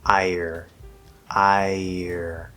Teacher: ir as like a blended sound you can say ire so it's not i year with a full y sound just a small little y